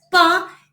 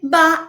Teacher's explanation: So they are both bilabial and they are both plosive. One is voiceless, pa, and ba is voiced.